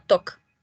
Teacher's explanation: Bueno, se escribe talk, que vendría siendo una T, una A, una L y una K, que es el verbo hablar, pero en realidad no suena así como se escribe, sino suena como talk. ¿Sí? Sin la pronunciación de la L.